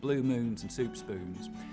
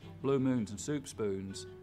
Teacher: the tongue stays further back through that whole vowel sound instead of coming forwards